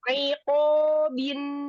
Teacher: ainnya jangan masuk hidung